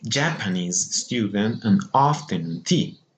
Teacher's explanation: if two stresses are next to each other in a phrase, for example, a Japanese student or afternoon tea, the first stress, okay, the first stress is moved to the preceding strong syllable. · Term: stress shift